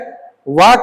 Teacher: तो ये व वैसा वर्ण है जो दो जगहों से उच्चारित होता है, तो इसलिए इसका उत्तर दंतोष्ठ हो जाएगा। दांत और ओष्ठ दोनों जगह से उच्चारित होता है, इसलिए इसको दंतोष्ठ कहेंगे